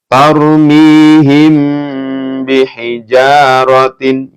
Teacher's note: ketika ada mim sukun bertemu dengan ba itu dibaca mendengung karena hukumnya Ikfa Syafawi